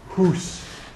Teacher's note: Whereas that's changed to house in the south, it didn't change in many Scottish dialects, and you still have hús in the Scottish dialect